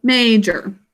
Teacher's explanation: in this word, we put emphasis on the first syllable, major.